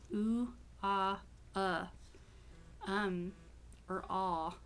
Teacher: The next one is the rounding. There's only 3 vowels that are rounded.